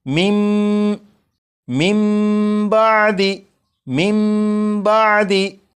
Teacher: जब नून साकिन के बाद बा है तो इस नून साकिन को फिर नहीं पढ़ेंगे, बल्कि नून साकिन को मीम से बदलेंगे और गुन्ना करके पढ़ेंगे · तो यहाँ पर क्योंकि नून साकिन है, नून साकिन के बाद बा है, तो नून साकिन को मीम से बदला, मीम से बदल कर गुन्ना करके पढ़ा और यही इकलाब है।